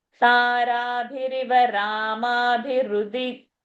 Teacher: Rama, I'm taking time. Then, Bhirudi, I'm saying fast.